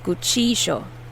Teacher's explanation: where i come from argentina we say guccijo the double l makes a sh sound sh so you'll also see that in other parts of the